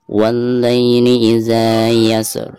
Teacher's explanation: Yang pertama huruf sin dan yang kedua huruf ro ya. Pertama kita baca huruf sin sukunnya lalu diikuti dengan suara ro sukun. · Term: dua huruf sukun